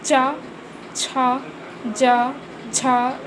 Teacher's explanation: इनके उच्चारण में जीभ तालु को छूती है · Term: तालव